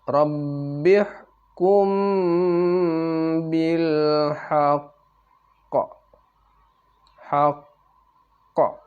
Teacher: suaranya ditekan ditahan dua harakat kemudian baru ada qalqalahnya diikuti dengan qalqalah